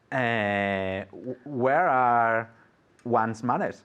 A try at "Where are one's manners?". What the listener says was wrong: Perfect, good.